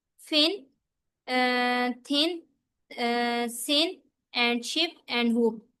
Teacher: Voiceless में क्या होता है कि हमारे जो वोकल फोल्ड्स हैं वो वाइब्रेट नहीं करते। ठीक है, यानी कि उनको प्रोड्यूस करते हुए हमारे वोकल फोल्ड्स में कोई भी वाइब्रेशन नहीं होती। · इनको आप प्रोड्यूस करें ना तो आपके वोकल फोर्स में कोई भी वाइब्रेशन नहीं होगी। वोकल वोकल फोर्स हमारे ना इधर हलक में होते हैं।